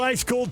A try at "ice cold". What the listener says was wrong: It sounded like you said high school.